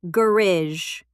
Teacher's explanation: In British English, garage. Stress on the first syllable.